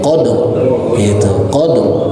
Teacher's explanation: Senyum itu tipis. Tapi kalau misalkan diangkat naik ke atas, menandakan bahwasanya huruf ro-nya menjadi tebal